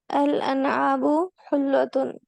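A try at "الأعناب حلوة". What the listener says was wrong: الاعناب حلوتن، پہلے عین کا اس پہ پہلے جی الاعناب حلوتن، انگور میٹھے ہیں کھٹے نہیں،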